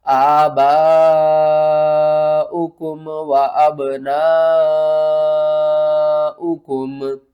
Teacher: مد متصل ہے، 5 الف کے برابر کھینچ کر پڑھیں گے